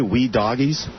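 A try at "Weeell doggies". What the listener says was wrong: Well, you have to pronounce it correctly. You're calling it "we doggies"? It's W-E-L-L-L. Well, doggies.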